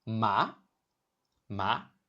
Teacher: The pitch starts mid and rises sharply, like asking a question in English. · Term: second tone